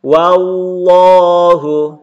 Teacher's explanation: ketemu dengan lafzul jalalah yaitu lafaz Allah, maka dibaca tebal.